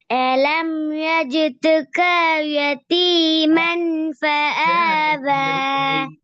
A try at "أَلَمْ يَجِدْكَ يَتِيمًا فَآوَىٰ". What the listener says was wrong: க என்றது பிழை. எஜிதுக்க என்ன நிக்க கூடாது, நிக்கிறது.